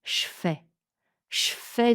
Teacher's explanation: Le je devient ch au contact du F.